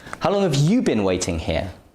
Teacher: this time you're emphasizing the word you because you want to make it clear who you're talking to that means that you is pronounced with its full pronunciation you